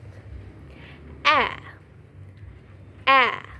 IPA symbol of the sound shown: æ